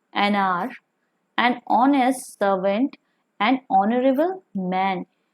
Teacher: In these words you can see H is silent, so they also begin with vowel sound, and therefore we will put before these words an.